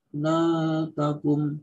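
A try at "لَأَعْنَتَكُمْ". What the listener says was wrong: Punya ainnya perjelas, Pak. Itu masih hamzah, Pak. Di la'anatakum itu lebih ke hamzah. La'anatakum.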